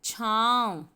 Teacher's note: छा आवाज़ मुंह और नाक दोनों से आ रही है, इसीलिए छा के ऊपर चंद्र बिंदु लगेगा और शब्द बनेगा छाँव। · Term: अनुनासिक